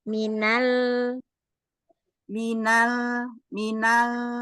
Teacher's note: Enggak di ujung saja, tetapi di ee makhrajnya lam semuanya nempel tetapi pangkal lidahnya turun enggak naik